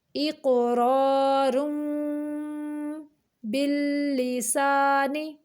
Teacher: نون ساکن کے بعد با آ گیا تو یہاں پہ اقلاب ہو رہا ہے، یعنی تنوین کی آواز کو میم میں بدل دیں گے